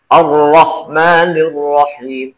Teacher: Kalau membunyikan huruf ro, itu menjurus ke punggung lidah. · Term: inhiraf